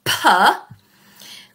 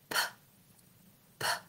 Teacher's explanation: We shouldn't actually be engaging our vocal cords at all. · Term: unvoiced sounds